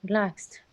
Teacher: the second syllable is stressed